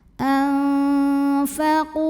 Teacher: nun sukun dibunyikan samar-samar, siap-siap menuju makhraj fa disertai dengung. Nah, karena fa ini makhrajnya tidak terlalu dekat, tidak terlalu jauh dari nun, maka bunyi samar dan dengungannya seimbang. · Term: ikhfa